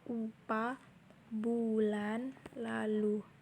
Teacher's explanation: Fonem U adalah vokal atas belakang bulat. Vokal ini dibentuk dengan kedua bibir agak maju ke depan dan agak membundar serta ke belakang lidah agak meninggi.